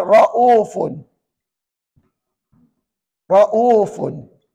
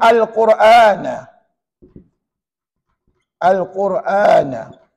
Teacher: walaupun namanya MSBB, tapi harakatnya sama, iaitu dua harakat, sama macam mad badal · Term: mad syibih bil badal